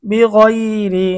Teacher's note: এখানে র এর নিচে জেড রয়েছে এজন্য র চিকন।